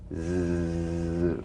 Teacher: The Z vibrates in that very small open space between the tongue and the upper teeth. Right in here.